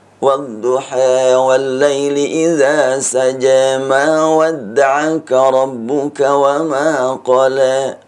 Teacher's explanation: Lalu di dalam riwayat Warash ada yang disebutkan al-imalatus sughra, atau yang lebih dikenal dengan at-taqlil, yaitu bacaan yang berharokat fathah tidak dibaca penuh fathah, tidak isba'ul fathi ya, tapi miring sedikit · Imalah sughra antara imalah kubra dengan fathah, sehingga bukan ad-duha, bukan juga ad-duhi, tapi sedikit miring, namanya taklil.